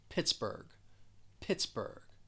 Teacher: it has two syllables the stress is on that first syllable · really wanted to highlight the end of the word that gh it's almost like you're just going to drop the h